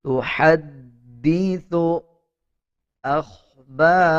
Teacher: خا کو پر پڑھا جائے گا، با کو 1 سیکنڈ لمبا کیا جائے گا، را کو بھی پر یعنی موٹا پڑھا جائے گا